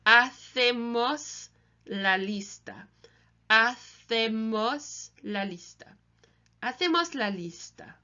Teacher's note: the CE in Spanish is a th sound.